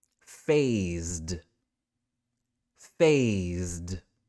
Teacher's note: how that letter s is making a z sound here and when we touch our throat for that z sound we can feel that vibration this is a voiced sound